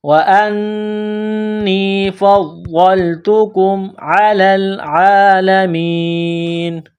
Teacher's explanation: جب اس آیت پر سٹاپ کریں گے، وقف کریں گے تو نون کو سائلنٹ کریں گے